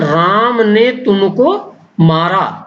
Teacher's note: यानी राम पर बल दिया जाता है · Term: बलाघात